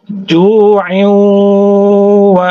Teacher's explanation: Artinya langsung diidghamkan, dimasukkan, digunahkan, ya. Idgham bi gunnahnya langsung dimasukkan ke huruf waw sambil didengungkan.